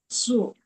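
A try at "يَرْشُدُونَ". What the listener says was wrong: shu. Nah, shu. Jadi tengah lidahnya menempel ke langit-langit. Shu.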